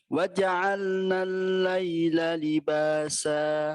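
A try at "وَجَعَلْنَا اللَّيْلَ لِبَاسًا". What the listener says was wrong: Tasdid lam jangan terlalu lama. Waja'alna al-laila.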